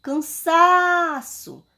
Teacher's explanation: Eu falei a sílaba sa. Ela foi a sílaba tônica da palavra. Ou seja, a sílaba mais forte da palavra.